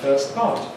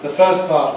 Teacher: drop the /t/ sound. We omit it. We leave it out. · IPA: [ˈfɜːs ˈpɑːt]